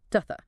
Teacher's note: That's linking. And then you'll notice that those unstressed vowels in to and the are reduced to a schwa sound